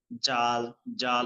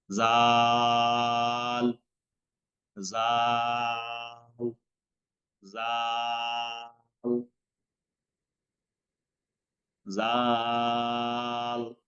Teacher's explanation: জিহ্বার আগা উপরে 2 দাঁতের আগা থেকে উচ্চারণ হবে, পাতলা হবে, বাতাস বেশি বের হবে না।